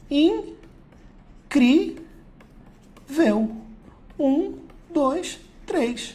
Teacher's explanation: A tônica está na penúltima, ó, tanto que está até acentuado. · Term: paroxítona